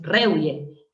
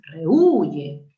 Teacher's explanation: Tú tienes que evaluar la secuencia de vocales E, U. Y el acento no está en la E, está en la U, no es rehuye, es rehuye. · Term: hiato acentual